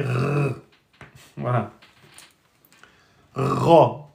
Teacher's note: cette lettre ressemble au R français, à la différence qu'elle est grave et emphatique.